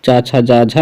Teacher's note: तालव्य का मतलब जो तालु से बोली जाती हैं। तालव्य मतलब तालु से।